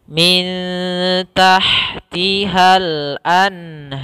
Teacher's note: Kemudian ha sifatnya kita alirkan nafasnya karena salah satu sifatnya hamas. Hamas itu adalah mengalirnya nafas kita.